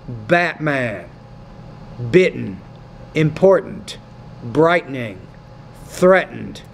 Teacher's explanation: In American English, we don't really pronounce that T. It becomes more of what we call a glottal stop.